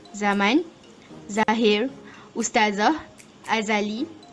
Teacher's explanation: Cara penghasilannya ialah hujung lidah dinaikkan sehingga menyentuh bahagian gusi. Udara keluar melalui sempitan pada bahagian gusi. Lelangit lembut dinaikkan untuk menutup rongga hidung. Pita suara bergetar. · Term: geseran gusi bersuara